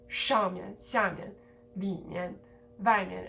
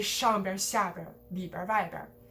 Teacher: the second syllable, the 面 or the 边, is de-stressed, and that's a result of the word level stress, not even the sentence level stress.